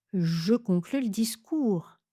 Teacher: Je conclus le discours. J'enlève le e de le. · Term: Réduction, réduction du E